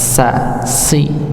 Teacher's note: jadi kalau kita rasakan ujung lidah ini bertemu dengan gusi bagian bawah walaupun bukan paling bawah pangkalnya tapi ujung dekat dengan pangkal gigi · Kalau sin, ya, itu ujung lidah. Ya, bertemu dengan gusi bagian bawah